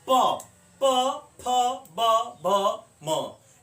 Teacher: ओठ दोनों चिपकता है, और उसके बाद वह खुलता है, फिर बंद होता है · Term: ओष्ठ वर्ण